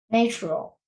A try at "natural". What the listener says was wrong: Yeah, not a long A sound. Not not natural. It's na. A short A sound. Natural, like apple, right?